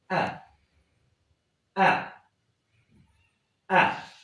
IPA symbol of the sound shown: æ